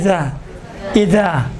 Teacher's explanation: یہ نوک زبان آپ دندان کے بیچ میں لائیں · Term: زال